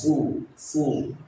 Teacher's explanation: karena domah bunyinya u maju bibirnya